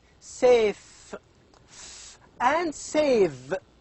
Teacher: the upper teeth and the lower lip these two are responsible to produce these two sounds and the upper teeth is the passive articulator and the lower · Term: labia dentals